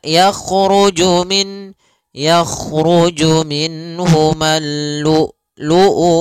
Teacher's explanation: Yang pertama adalah sifat jaharnya dan kedua sifat syiddahnya. Jahar itu tertahannya nafas, kalau syiddah adalah tertahannya suara. Maka lu'u harus tertahan. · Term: hamzah yang disukunkan